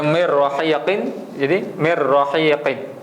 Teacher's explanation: sini dia punya Idam bila gunahnya nun mati bertemu dengan Ro Jadi bacaan dia adalah memasukkan Nun tu seolah-olah Nun tu tidak ada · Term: idgham bila ghunah